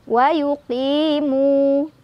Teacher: Mu mad dhabi'i karena ada waw sukun, sebelumnya ada dhammah di mim. Cara bacanya 2 harokat.